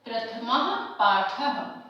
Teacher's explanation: ये जो विसर्ग है इसे ह उच्चारण करते हुए पढ़ेंगे आप लोग